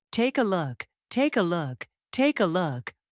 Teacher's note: The consonant K connects to the vowel A. When spoken naturally, the sounds merge so closely that it feels like one unit. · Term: consonant linking